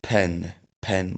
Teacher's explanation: फ्यान फ्यान भन्दा खेरि अलि बढी प्रेसरमा हा निस्किन्छ